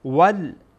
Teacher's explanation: اسحاق وی وی یاعین باهم خوانده میشه ویعقوب ویعقوب والسب وال واو با لام در اینجا وصل میشه با هم خوانده میشه